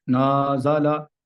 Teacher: یہ lesson number 6 ہے، حرکات کو پڑھنے کی پریکٹس ہو رہی ہے یہاں پہ کہ نزلہ، خلق، صدقہ، یدقہ، ان میں جو کم ایج بچے ہوتے ہیں وہ عموماً اغلاط کرتے ہیں، جیسے نازلہ ایسے پڑھا تو اب یہ ایک انداز جو ہے وہ عجیب سا ہے، یعنی نون کو لمبا کر دیا، کھینچ دیا، اور زا اور لام کو نہیں کھینچا، حالانکہ نون کو کھینچنے کی کوئی صورت موجود نہیں ہے۔